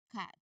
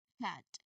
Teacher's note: So, you try to use a strong sharp puff of air from the back of your mouth. Remember that the back of your tongue it blocks the air completely for a moment. So this sound is really unvoiced.